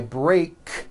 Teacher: break ends with an unvoiced k sound